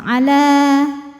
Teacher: Kalau berhenti panjang dua harakat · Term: mad thobi'i